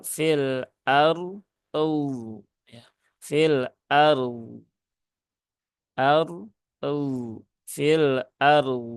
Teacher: dua-duanya huruf yang dibaca tebal dan memang syaratnya adalah menaikkan pangkal lidah